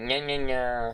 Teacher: It's the voiced palatal nasal consonant